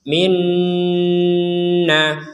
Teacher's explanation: Di sini ada nun bertasydid, maka kita membacanya dengan dengungan. Minna, di rongga hidung kita berdengung.